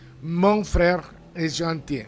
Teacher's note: the final N on mon, you don't pronounce it. It's nasal. It's just like through your, forcing the air through your nose.